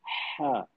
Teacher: ऐसा लगता है कि जैसे हल्की हवा गला छोड़कर निकल रही है। एक मिसाल आप थकान के बाद हल्की सी सांस लेते हैं और कहते हैं हा बस वैसे ही नरम सी लहजा होता है हा का।